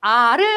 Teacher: 발음할 때 입이 많이 벌어지고 혀의 높이가 낮은 모음을 가르켰죠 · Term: 저 모음